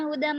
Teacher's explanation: हुदम हा पे पेश है तो होठों को गोल करेंगे और दाल के बाद मीम है, हुदम मीम पे गुन्ना होगा।